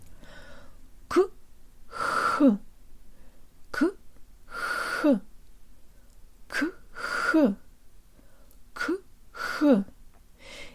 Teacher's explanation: Now follow the K sound, which begins with full obstruction where no air can get through, with a sound where the tongue is almost in the same position, very high, and you can hear the air escaping through a narrow passage in the same place. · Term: k-h exercise